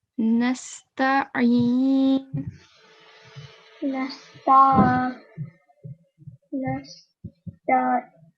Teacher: the sound of Ain should come from the middle of the throat